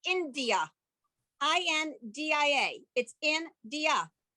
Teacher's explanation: There's no vowel between the N and the D. And so what the shva, the 2 dots is a shva.